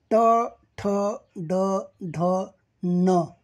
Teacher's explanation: ट, ठ, ड, ढ, न या वर्णांचं उच्चारस्थान टाळू आहे.